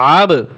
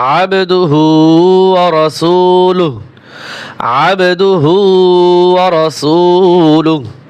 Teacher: ওয়া আশহাদু আন্না, ওয়া আশহাদু আন্না মুহাম্মাদান, মুহাম্মাদান, আব, আইন বা জবর আব, আইন গলার ভিতরে চাপিয়ে হবে এবং এই যে বার উপরে সাকিন আছে, এখানে কলকলা হবে